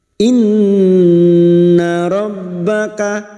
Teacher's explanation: Nun yang bertasdid gunah musyaddadah kita denggungkan selama tiga harakat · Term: gunnah musyaddadah